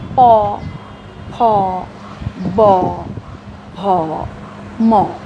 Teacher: এই ওষ্ঠ ব্যঞ্জন ধ্বনিগুলো যখন আমরা উচ্চারণ করি আমাদের দুটো ঠোঁটের সংস্পর্শ প্রয়োজন হয়